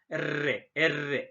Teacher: se debe a la vibración del ápice de la lengua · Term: vibrantes